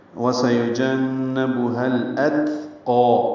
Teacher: تا ساکن ہے، اس پہ ہمس ہے · قاف پر کھڑا زبر ہے، 2 حرکات لمبا کریں گے · ہا کو الاتقا کے لام سے ملانا ہے، اظہار قمری ہے